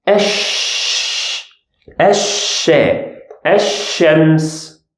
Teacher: this letter is equivalent to the sound sh in English and because it's duplicated so we will duplicate the sound